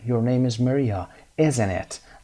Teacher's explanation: falling intonation معمول هست، یعنی رایج هست که برای زمانی که اسپیکر ما یعنی گوینده ما مطمئن هست از چیزی که داره میگه. مثل مثال های بالا، همین مثالی که در اینجا میبینیم your name is Maria، از روی لیست داره میخونه your name is Maria isn't it، از بالا به سمت پایین میاد isn't it و مطمئن است از چیزی که داره میپرسه.